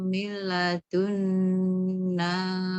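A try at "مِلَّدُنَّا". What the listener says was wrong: Milla, nah milla meskipun langsung mengalir, nah tapi tetap karena di situ ada tasydid, kaidah tasydidnya juga harus diperhatikan gitu. Jadi seperti membaca 2 lam, milla. Kalau milladun, nah itu belum tasydid, milla. Seperti double lamnya.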